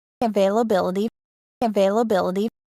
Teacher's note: little bit of stress availability da da da da da da so the primary stress is on the fourth syllable but there is secondary stress on the second syllable